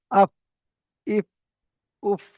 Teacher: সামনের উপরের দুটো দাঁত নিচের ঠোঁটের মাঝখানে লাগবে। আফ, ইফ, উফ, এমন ভাবে উচ্চারিত হবে। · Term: ফা এর মাখরাজ